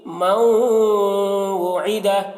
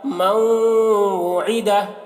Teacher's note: نون واو کے ساتھ مل رہا ہے، ادغام ہو رہا ہے ناقص طور پر، مکمل طور پر نہیں ہو رہا ہے، اور غنہ کے ساتھ میں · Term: ادغام ناقص